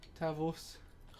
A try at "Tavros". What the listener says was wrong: Oh no, Tavros. Roll your R. Tavros.